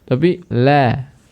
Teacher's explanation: Lam itu sifatnya tarqiq, rendah, bukan tafkhim, bukan tinggi